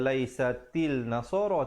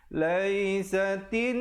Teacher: Alif lam syamsiah, di situ lamnya tidak dibunyikan.